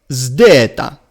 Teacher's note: It is zd. Now, the first element is like the English word zone, but it must be combined with the D of dental. So it is zd, zdeta.